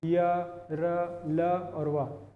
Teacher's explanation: अपना कंपन महसूस हो रहा है इसमें, य, र, ल, व का जैसे उच्चारण कर रहे हैं। अल्प प्राण जिसमें मुख से कम हवा निकल रही है, य, र, ल और व, इसमें कम हवा निकल रही है।